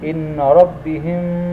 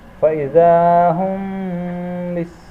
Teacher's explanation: bunyi mim sukun dibaca samar-samar di bibir dan dengung